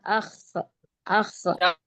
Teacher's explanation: تھوڑا سا موٹا اور کھینچ کے پڑھیں گے، اور اس کا مخرج ہے حلق کا اوپری حصہ۔ حلق کا اوپری حصہ یعنی جہاں سے ہماری زبان شروع ہوگی وہ ہے حلق کا اوپری حصہ۔